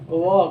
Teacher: अब दंतोष्ठय क्यों, आप कहेंगे भाई व कैसे दंतोष्ठय हो गया, तो देखिए जब व का आप उच्चारण कर रहे हैं तो व नहीं कहते, व कहते हैं, मतलब कि निचला होठ और ऊपर का दांत क्या होता है, आपस में टकराता है ना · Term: दंत ओष्ठय